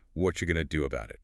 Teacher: It feels faster, but it's actually shorter and smoother. Notice, what are you becomes what you.